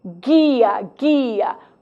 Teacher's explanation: Você não escuta a letra U porque não existe guia, existe guia.